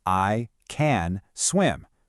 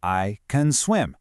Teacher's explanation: A native speaker focuses on the words that carry the real meaning. So, that little function word can gets squished down to can. It sounds more like I can swim.